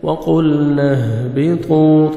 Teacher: طا کو موٹا کر کے پڑھنا ہے، 1 سیکنڈ کھینچیں گے، واو مد ہے۔